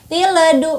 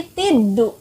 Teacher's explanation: Di sana ada alif dan lam di sana, tapi lamnya tidak dibaca. Jadi dari kata ti digabungkan dengan dal langsung. Jadi lamnya tidak dibaca. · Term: alif lam syamsiyah